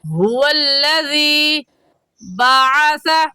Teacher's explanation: اس آیت میں هو الذی بعث، ہا کا مخرج ہے کہ حلق کا آخر جو سینے کی طرف ہے اس سے ہا نکلتا ہے